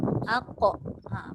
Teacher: akhir sekali barulah bunyikan lantunan pada huruf qaf. Sebab tu sifat qalqalah itu berada di bawah sekali.